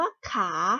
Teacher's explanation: คำว่าขาเป็นรูปสามัญแต่เป็นเสียงจัตวานั่นเองค่ะ รูปสามัญที่คุณครูเอ่ยก็คือไม่ปรากฏรูปนั่นเองนะคะอย่าสับสนนะคะเด็กๆต่อไปค่ะเมื่อเรารู้แล้วว่าของสูงสามารถผ่านได้3เสียงก็คือเสียงเอกเสียงโทและศิลป์จักรวาแล้วลองไปกว่าเวลานำมาใช้ในการผันเราสามารถผันวรรณยุกต์ได้อย่างไรบ้างตัวอย่างเช่นถามว่าก็ขออาขาไม้เอกข่าขออาสาในโทถ้าขออาสานมั๊ยคะรูปเอกโทจัตวาปรากฏสินตาม